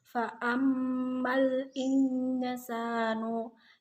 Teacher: yang disebut dengan bacaan ikhfa hakiki yang dibaca samar karena ada nun sukun bertemu dengan sin.